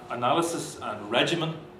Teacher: the last bit of the word looks like it's got a heavy syllable, and yet that final syllable doesn't attract the stress. So it's behaving as though it's not heavy.